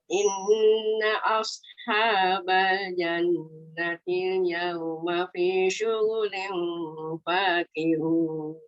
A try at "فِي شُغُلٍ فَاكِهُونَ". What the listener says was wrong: Okey, pada fi syughuli sebut fi syughuli, sebut li. Okey, kemudian baru masuk nun yang ikhfa. Fi syughulin fakihun. Lew tak nak, li dulu. Fi Lew tu tak nak, lew. Lam tu dia dah lari daripada lew. Asalnya bunyi li. Kekalkan bunyi li tu. Sebab yang kita nak dengung tu nun. Nun.